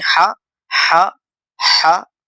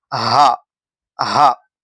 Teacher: یہ جو ہا ہے یہ حلق سے نکلنے والی ہا ہے، اور اس کے بازو میں جو ہا ہے یہ ہا سینے سے نکلنے والی ہا ہے۔ یہ حلق سے نکلنے والی ہا، ہا، ہا، اور یہ ہا، ہا۔